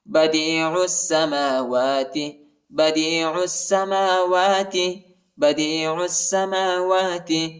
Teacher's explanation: عین کو سین کے ساتھ ملائیں گے، الف اور لام نہیں پڑھا جاتا، الف اور لام کے اوپر حرکت نہیں ہے.